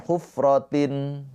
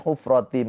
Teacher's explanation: Cara bacanya tanwinnya ini dileburkan ke huruf mim. Ditahan dua harakat bighunna bighunnaah itu sambil dengung. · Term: idgham bighunah